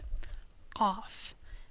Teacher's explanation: Qaf is similar to Q, but pronounced further down in the throat. Qaf, like a little clicking sound almost.